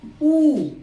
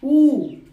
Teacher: ओष्ठ गोलाकार हो जाता है, ओष्ठ क्या हो जाता है, गोलाकार। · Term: समवृत्त